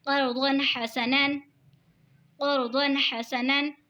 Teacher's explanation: دو زبر کی تنوین کے بعد حروف ہلکی کا حار ہے تو اظہار ہوگا یعنی گنہ نہیں کریں گے